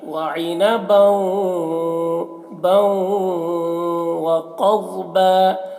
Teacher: عین کو حلق سے ادا کریں گے